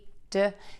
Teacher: touch the tip of your tongue to the back of your top front teeth. The air puffs out slightly, and your voice box is on.